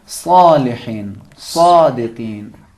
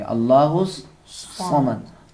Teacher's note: سین، جس طرح سین کو تلفظ کرتے ہیں اس کو تھوڑا موٹا پڑھتے ہیں. حرف سین کو تھوڑا سا موٹا ادا کریں گے، حرف صاد بنے گا.